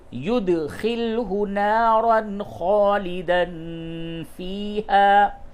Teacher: یہ تنوین کے بعد خا ہے، جگہ پہ اظہار ہوگا، غنہ بالکل نہ کریں